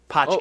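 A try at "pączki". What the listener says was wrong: I looked it up this morning. yeah, there's an N sound in there. Punchki.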